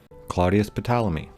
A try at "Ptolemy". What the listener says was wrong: It's Ptolemy. The P is silent, like how the P in pterodactyl or the O in possum are silent.